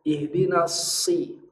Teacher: Lalu sod keluar dulu, bunyi sofirnya 2 kali lipat karena ada tanda tasdid.